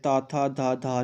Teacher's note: Next बात करें तो हम जो ट वर्ग है तो ये जब आप इसका उच्चारण करोगे जो आपकी जीभ है वो आपके मूर्धा को स्पर्श करेगी। नेक्स्ट त वर्ग जब आप बोलोगे तो आपके दंत को जीभ टच करेगी